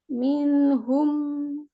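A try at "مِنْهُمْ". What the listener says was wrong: Nah, jangan hum, minhum. Biasa aja.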